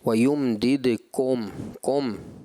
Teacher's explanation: تو یہ جو کم لفظ ہے یہ مجھے ایسا لگ رہا ہے تھوڑا سا مجہول کی طرف جا رہا ہے